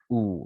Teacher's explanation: Jadi kalau misalkan yang rounded, yang seperti eh, setengah lingkaran, itu lips, where the corners of the lips are brought toward each other and the lips push forward